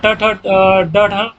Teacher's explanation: ट वर्ण ट ठ ड ढ ये मूर्धन्य होता है